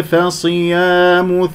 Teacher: صاد مفخم مرتبة أخيرة